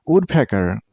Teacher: Don't stress on the wrong syllable. Stress on the first one.